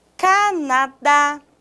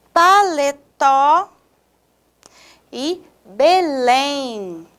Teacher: a última sílaba a sílaba forte a sílaba tônica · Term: oxítonas